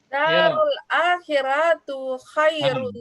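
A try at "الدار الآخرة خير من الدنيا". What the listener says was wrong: Akhiratu kok baca? Kan keliru dong. Darul akhirati. Ingat huruf samsiah kamariah ini. Darul akhirati khairum minat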